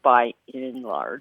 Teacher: We tend to drop that D on and it's sometimes hard to hear.